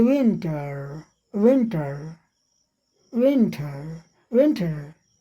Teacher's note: विन के बाद जब ट बोलने लगते हैं, जीभ आपकी जा करके जो आगे का दांत है वो ऊपर का मसूड़ा वहाँ चिपक जाती है, ब्रिज टाइप का। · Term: डेंटल